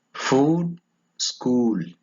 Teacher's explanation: High back tense vowel.